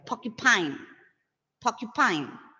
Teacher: R is coming before a consonant sound, right? Before ka. So R goes silent there.